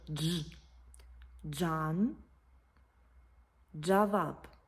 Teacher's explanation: складається із звуків д Та ж